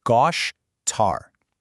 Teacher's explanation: Let's see how this builds a really unique sound, specifically isolating that sh right in the middle. In Brazilian Portuguese, that s often softens into this beautiful sh sound.